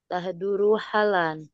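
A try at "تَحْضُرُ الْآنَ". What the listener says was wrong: Ha panjang.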